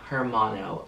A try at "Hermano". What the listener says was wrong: Hermano, You don't pronounce the H.